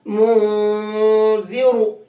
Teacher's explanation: تو یہ نون ساکن ہو گیا اور اس کے بعد میں تا، یہ والا یہ آ گیا. تو اب اس نون کو ناک میں چھپا کر کے پڑھیں گے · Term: اخفا